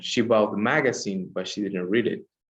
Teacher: It started like normal, they would say magazine. The quality of the voice is high, and then goes down by when we say, but she didn't read it. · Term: no final intonation